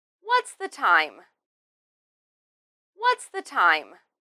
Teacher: In this question, we emphasize what's and time, and then end it in a falling tone.